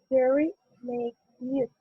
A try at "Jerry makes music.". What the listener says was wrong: Jerry makes music. You see, you're reading each one of the words, and it sounds super flat. So we need to emphasize more on one. You could have said either Jerry makes music or Jerry makes music.